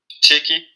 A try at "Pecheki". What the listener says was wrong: Très bien. Là, c'est bon.